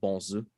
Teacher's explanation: Like the actual Missouri French pronunciation would be bonjour or bonzu with like a nasal vowel, so like bon rather than bone